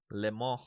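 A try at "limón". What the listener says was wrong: No, lemon. No, it's Spanish. Lemon. No, it's not lemon. Lemon. There's an N at the end of it.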